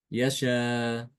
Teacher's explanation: Jadi ketika wakaf, Imam Hisham nanti membaca dengan mengganti hamzah ini dengan huruf alif.